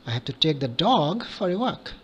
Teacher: So your emphasis is on dog. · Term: Tonic stress